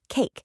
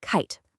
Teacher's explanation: Your mouth actually changes shape while you're in the middle of making the vowel sound. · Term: diphthongs